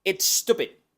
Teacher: poquito más plosiva que la del español una I corta y la d que por ir a final de sílaba no es aspirada o sea que solo hacemos la oclusión · porque aquí está empezando la sílaba enseguida tenemos una u larga una p del inglés que es un poquito más plosiva que la del español una I corta y la d que por ir a final